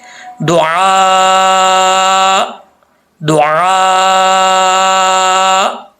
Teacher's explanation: Last में जब रुकेंगे तो हमज़ा की आवाज़ आएगी, थोड़ी सी हमज़ा का थोड़ा सा साउंड आएगा, तो फिर ये इसकी अदायगी सही होगी।